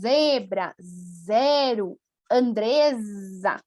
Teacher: A letra Z, ela é muito vibrada